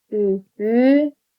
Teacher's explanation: Sadəcə mən üfüqi sözü var ki, üfüqi sözü bura istisnadır. Üfüqi sözündə üfüqi ikinci Ü uzanır. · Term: uzun tələffüz